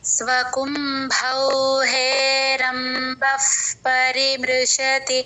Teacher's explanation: చెప్తారు పొరపాటుని చెప్తూ ఉంటారు బ కి మహాప్రాణం లేదండి అది గమనించుకోవాలి తర్వాత బ తర్వాత విసర్గ ప ముందు విసర్గ ఉఫ్ అన్న అన్నట్టు చెప్పాలి ఎఫ్ లాగా చెప్పాలి